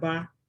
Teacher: Ah, it's going up, it's high.